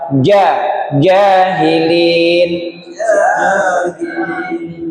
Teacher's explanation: jahilin agak ditekan karena dia huruf siddah, huruf yang kuat suaranya.